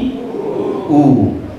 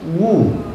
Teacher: waw mati bunyi u, bukan bunyi wu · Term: waw sukun